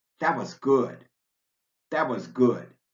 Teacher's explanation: You'll also want to make a note of where the T sound drops out completely. For example, before words beginning with a W